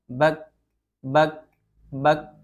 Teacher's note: Kemudian sifat yang kedua ada syiddah, tertahannya suara ketika kaf disukunkan atau diwakafkan